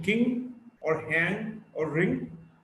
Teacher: Ng is a voiced velar nasal. Ng in king, or hang, or ring.